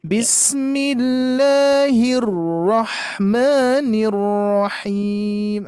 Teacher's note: Nah cuman cara mensukunkannya apalagi huruf ro ini mempunyai sifat tawasud ya. Jadi sedikit mengalir dulu.